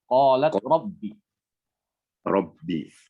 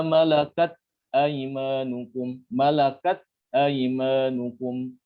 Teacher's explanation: ketika mengucapkan ta, ya, qalat, jangan langsung dilepas, ditahan. Qalat, ya, misalnya qalat rabbi.